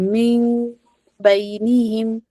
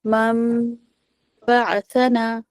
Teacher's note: اور غنہ بھی کریں گے 2 حرکت تک ہم اسے، اس کی آواز جو ہے وہ ناک پہ چھپا کر رکھیں گے